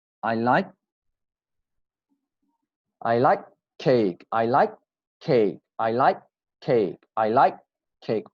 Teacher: Only one K and very strong